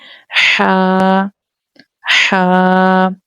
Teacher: This ha comes from the middle part of the throat. حلق کے درمیانے والی حصے سے ادا ہوتی ہے.